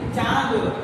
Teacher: जिन शब्दों का उच्चारण करते समय ध्वनि नाक और मुंह दोनों से निकल करके आए उसे हम अनुनासिक कहते हैं